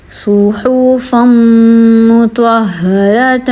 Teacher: ہا پہ بھی ہم نے زور دیا کیونکہ ہا کو 2 بار پڑھا ہے، ہا کے اوپر تشدید ہے